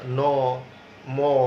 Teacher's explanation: কথা বলার সম্পর্কটা হচ্ছে, আমাদের কিছু কিছু বর্ণ আছে যেগুলো উচ্চারণের সময় ফুসফুসতাড়িত বাতাস মুখের পাশাপাশি নাক দিয়েও বের হয়ে আসে, অর্থাৎ নাকের সাহায্য নিতে হয়, যেগুলোকে আমরা নাসিক্য বর্ণ বলি।